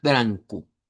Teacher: una anasalizada con la n al final